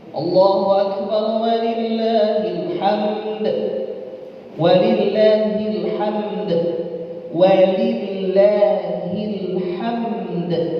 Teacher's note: dalnya juga harus dibaca dan sifat qalqalah tetap ada